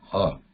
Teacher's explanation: It has a breath, but it also has a vibration, ha.